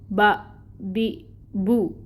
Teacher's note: बा के मखरिज में 2 होंठों का तर हिस्सा आपस में मिल रहा है।